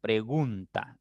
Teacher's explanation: pregunta es una palabra de 3 sílabas. La sílaba tónica es gun, ahí está la mayor fuerza. Y las átonas son pre y ta.